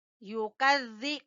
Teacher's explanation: ठीक है, फमा युकज़्ज़िबुका, युकज़्ज़ि काफ बारीक है और जाल जबान की नोक सामने वाले दो दांतों के सिरे से जाल अदा होगा